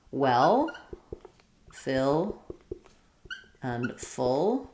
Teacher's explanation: for well, fill, and full, for those three vowels, there's really no extra vowel before the L. It's just a straightforward, same as a light L.